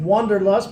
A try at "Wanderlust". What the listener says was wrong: It's Wanderlust, you know. It's just with an A instead of an O.